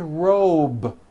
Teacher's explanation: robe also has a voiced B ending it's not rope with an unvoiced P it's robe okay let's